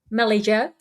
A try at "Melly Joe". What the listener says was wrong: No, you're supposed to pronounce it. You always pronounce the Joe like higher.